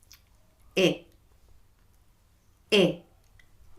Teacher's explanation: closed E, mouth is more closed in a sort of smile shape, and your tongue is higher